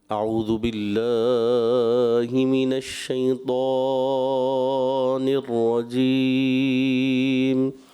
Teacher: اب رجیم پہ تو مد عارض ہو رہا ہے تو اس کو کھینچ سکتے ہیں